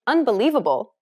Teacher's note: When you say unbelievable, in English for example, do you notice how li is accentuated? That's because it's pronounced longer and louder than all of the other syllables. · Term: stress